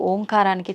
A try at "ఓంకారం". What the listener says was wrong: అది ఓంకారం కాదు, ఔంకారం. మనం పలకడమే దాన్ని తప్పు పలుకుతున్నాం. మనం మాట్లాడుతున్న ప్రతి మాటల్లో ఎక్కడో ఒక చోట అకారము, ఉకారము, మకారము ఉంటాయి. అకార ఉకార మకార అర్ధమాత్ర ఇది ఓంకార. అర్ధమాత్ర మకారం అన్నాడు. ప్లస్ ఆ. ఔం అని ఉచ్చరించినప్పుడు అకారము ఉకారము రెండూ పలకబడి ఓంకారం దీర్ఘమవుతుంది.